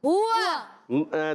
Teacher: کی ادائیگی ہمیشہ ہونٹوں کی گولائی سے ہوتی ہے ہوا میں ہا پر پیش ہے واو پر زبر دونوں میں ہونٹ گول ہو جائے